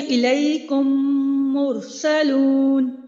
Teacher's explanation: پہلی میم کو دوسری میم کے ساتھ ملا کر ایک الف کے برابر غنہ کرنا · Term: ادغام شفوی